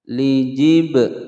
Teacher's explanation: ada ba sukun, hukum bacaan qalqalah sughra, dipantulkan